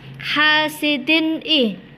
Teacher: Di situ juga ada bacaan idhar halqi di mana ada tanwin bertemu dengan alif, maka harus dibaca terang dan jelas